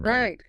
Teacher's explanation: your voice, your intonation, it goes up at the end when you say, right.